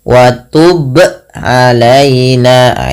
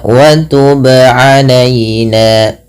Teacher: Nah, kemudian juga ada terjadi kesalahan di dalam membaca qalqalah yaitu menambahkan hamzah, contoh wa tub alaina, ah ini juga salah. Yang benar adalah dia memantulkannya tanpa berhenti, tanpa menambahkan hamzah. Ya, contohnya wa tub alaina, sesuaikan dengan makhraj dan sifat dari huruf ba.